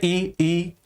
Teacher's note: जीभ का सामने वाला भाग अग्रभाग सक्रिय है, दीर्घ ई, ऊ नहीं है।